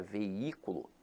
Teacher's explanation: apesar de ter hiato, veja que a sílaba tônica se encontra na antepenúltima sílaba. Então aqui ela é acentuada pela regra da proparoxítona.